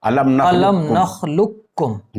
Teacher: علم نخلقکم میں ادغام تام اور ادغام ناقص دونوں طریقے سے پڑھنا جائز ہے۔ جی، ادغام تام کا مطلب یہ ہوا کہ لام کے بعد سیدھے چھوٹا کاف پڑھا جائے